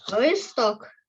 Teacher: якщо листок то наголос на О